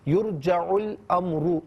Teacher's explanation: امر میں را پر پیش را کو پر کر کے پڑھیں گے